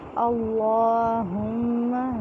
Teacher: اللہم میں اللہ کا لام جو ہے موٹا پڑھا جائے گا. اس میں جلالہ کلام سے پہلے زبر یا پیش ہو تو اسے موٹا پڑھتے ہیں. · ہا جو ہے یکسر حلق سے نکالیں گے سینے والی سائڈ سے